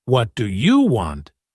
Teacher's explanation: But if you stress you, like, What do you want, it can sound rude or aggressive.